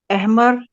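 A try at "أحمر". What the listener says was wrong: احمر، اے نہیں ہوگا، احمر.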